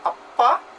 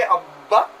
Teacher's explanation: That is because in the production of the sound ba, the glottis continues to oscillate, or the air keeps coming, puffs of air keeps coming from the lungs to the oral cavity, even though it is closed here.